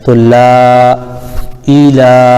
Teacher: لام پر کھڑا زبر ہے اور کھڑا زبر الف مدہ کے برابر ہوتا ہے